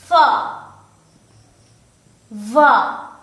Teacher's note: Labiodental, which means that the lower lip and the upper teeth is involved as far as the articulation of f and v sounds are concerned. The lower lip and the upper teeth.